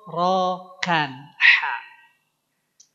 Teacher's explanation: Ini keluarnya di tengah tenggorokan. Namanya atau lafalkannya menjadi H.